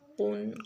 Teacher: قاف موٹا پڑھیں گے اور غنہ بھی کریں گے